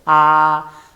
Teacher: Por ejemplo, la única vocal abierta en el español es la vocal A. Se llama abierta porque el ángulo de abertura de la boca está en su mayor ángulo. · Por eso es baja, porque la lengua está en su punto más bajo, y central, porque no se desplaza ni hacia adelante ni hacia atrás. Por eso es vocal baja central, la A.